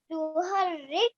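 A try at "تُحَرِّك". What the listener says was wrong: Make sure you pronounce the kaf as well with the sukoon here. To harrik.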